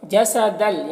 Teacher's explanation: تنوین کو لام سے ملا کر بغیر غنہ کے پڑھیں گے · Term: ادغام تام